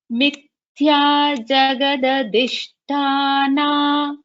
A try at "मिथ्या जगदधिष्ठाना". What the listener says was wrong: So this tha, you have to put more prana.